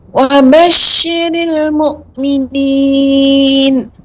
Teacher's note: Ya, shinnya kurang menyebar.